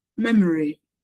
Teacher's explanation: So the stress is on the first syllable.